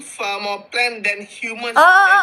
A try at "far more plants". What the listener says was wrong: You did it again. You said far more plant, but it's far more plants with an S. Far more plants.